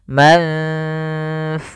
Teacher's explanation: ikhfa adalah membacanya ke huruf yang setelahnya atau disamarkan ke huruf fa-nya. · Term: bacaan ikhfa